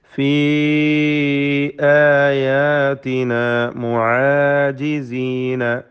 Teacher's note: ഫീ ഇതിലെ ദീർഘാക്ഷരമായ യാ മദ് മുൻഫസിൽ ജായിസ് നൽകി 4-5 ഹറക്കത്തിൻ്റെ അളവിൽ ദീർഘിപ്പിക്കൽ അനുവദനീയമാണ്.